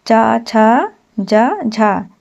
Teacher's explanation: इन व्यंजनों के उच्चारण में वागांगों का स्पर्श भी होता है और प्रशास वायु को संघर्ष भी करना पड़ता है। हिंदी के जो च वर्ग होते हैं च वर्ग यानी च, छ, ज, झों ही स्पर्श संघर्षी व्यंजन हैं।